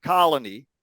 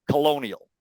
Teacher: it's long in the case of colony and it shortens when we say Colonial first vowel is significantly shorter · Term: vowel length